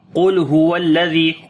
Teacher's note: Qaf we did in heavy sound due to isti'la letter. On the lam we make sift tawassut.